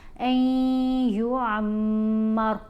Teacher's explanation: غنہ یعنی آواز ناک میں جاتی ہے، نون کی آواز یہاں پر ختم ہو جائے گی، ایک حرکت کے برابر ٹھہر کر پڑا جائے گا۔